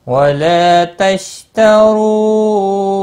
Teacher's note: واو مدہ ہے، ایک الف کے برابر کھینچ کر پڑھیں گے